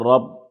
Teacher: را کو موٹا پڑھیں گے کیونکہ را پر زبر ہے اور تشدید کی آواز میں سختی ہوگی کیونکہ با پر تشدید ہے۔